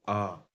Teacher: आ में मुंह खुलता है, गोलाकार नहीं होता है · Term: आवृत्तमुखी